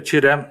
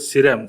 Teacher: В западном диалекте вместо согласного с часто употребляется ч.